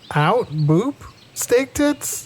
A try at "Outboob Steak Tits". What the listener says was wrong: It's faster. You have to say it faster. Out boob steak tits.